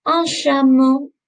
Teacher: With the C and the H. As in English, it makes a ch sound, but in French, it's a little bit softer, okay? It's a sh sound.